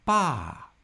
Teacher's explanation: And the fourth tone falls starting at the high end of our pitch.